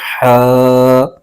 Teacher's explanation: حا پر کھڑا زبر ہے، اس کو ایک الف کھینچ کے پڑھیں گے